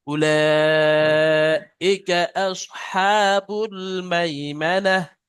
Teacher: উলা এখানে মাধ্যম মুত্তাসিল, তিন আলিফ পরিমাণ টান দিতে হবে।